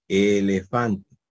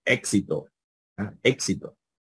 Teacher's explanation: suena como la e pero como una e larga